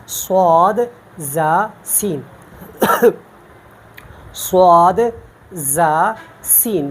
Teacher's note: جب زبان کا سرا ثنایا سفلا کے کنارے سے لگ جائے تو وہاں سے ہم یہ 3 حروف ادا کرتے ہیں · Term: حروف صفیر